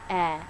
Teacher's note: The tongue will lift a bit in the middle front. · The jaw drops a good bit for this vowel. The tongue tip is forward and down, lightly touching the back of the bottom front teeth. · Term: E as in bed vowel